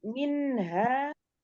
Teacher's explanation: Kemudian minha, ini non sukun bertemu dengan huruf H, ini ikhfa, dibaca dengung dan samar